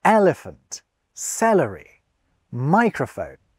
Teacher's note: The stress always on the first syllable.